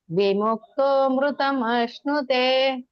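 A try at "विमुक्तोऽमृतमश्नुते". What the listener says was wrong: ವಿಮುಕ್ತೋ ಸ್ವಲ್ಪ ದೀರ್ಘ ಮಾಡಿ ಇದನ್ನ ಇಲ್ಲ ಅಮೃತ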